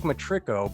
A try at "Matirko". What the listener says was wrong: You flip the R in the I. Everybody does it. Matirko.